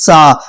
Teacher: جب ہم سا بولتے ہیں تو سیٹی والی آواز آ رہی ہے